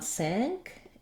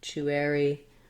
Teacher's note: i want my stress on the sank syllable and then the chewery syllables are going to go quick and be somewhat reduced